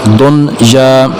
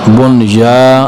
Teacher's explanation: ये चार हरूफ जो हैं ये खिलाफ क़ियास, इसमें यरमलून वाला कायदा यहाँ पर नहीं चलेगा, यानी कि नून साकन और नून तनवीन के बाद हरूफ हल्की में से ना आए तो गुन्ना करते थे। अब यहाँ पर नून साकन या नून तनवीन के बाद हरूफ हल्की में से नहीं आ रहा, फिर भी यहाँ पर गुन्ना नहीं करेंगे